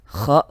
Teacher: kha ini ya, di tenggorokannya cuma sebentar saja, langsung dia keluar menuju mulut, sehingga bunyinya juga akan terasa berbeda, akan terdengar sangat berbeda sekali.